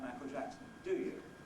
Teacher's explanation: we usually get a fall it's not really a question anymore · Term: falling question